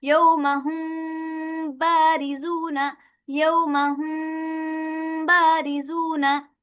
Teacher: बा को सख्ती के साथ नीचे वाले तरी से अदा किया जाए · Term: इख्फे शफी